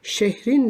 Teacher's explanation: şehir sözcüğü burada bir ünlü düşmesi var